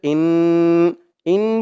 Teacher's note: হরকতের পরে নুনের উপরে তাসদিদ আসছে ওয়াজিব গুন্না হয়